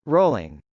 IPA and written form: rˈoʊlɪŋ (rolling)